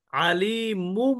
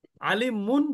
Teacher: এখন এই যে যে তানবিনের মধ্যে যে নুন উচ্চারিত হচ্ছে, এই নুনটা আর নুন উচ্চারিত হবে না। এখানে মিমের উচ্চারণ করতে হবে। কিভাবে? আলী মুম বলতে হবে, আলী মুম। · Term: ইকলাব